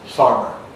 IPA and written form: ˈfɑːrmər (farmer)